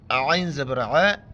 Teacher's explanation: عین کو گلے سے ادا کرنا ہے